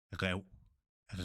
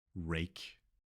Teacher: the Danish has to come from deeper in your throat. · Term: throatal R